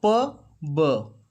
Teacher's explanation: P is voiceless, whereas b is voiced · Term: voiced and voiceless sound